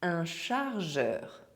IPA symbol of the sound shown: ʒ